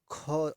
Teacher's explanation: ख स्पर्श व्यंजन भी है, कंठ ध्वनि भी है, अघोष भी है और महाप्राण भी है